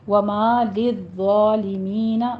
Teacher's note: وما للظالمین، وا کی آواز کو پور پڑھنا ہے اور ذا پر سیٹی کی آواز نہیں آنی چاہیے، اوپر فتحہ قائمہ ہے، للظالمین تشدید کے ساتھ پڑھیے، سختی کر کے پڑھنا ہے